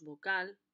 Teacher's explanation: de la misma manera que pronunciamos bucal remarcando la última sílaba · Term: sílaba tónica